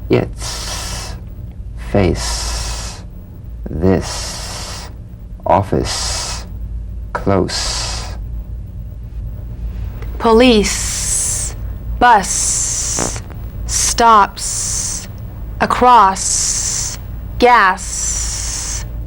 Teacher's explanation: the s is like the z except it's unvoiced so it's the same tongue placement as the z the z the s is like a gentle escape of steam · the s cognate to the z unvoiced s sound fricative tongue to gum ridge the s is like the z except it's unvoiced so it's